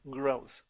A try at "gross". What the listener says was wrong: Good. All right, nice job.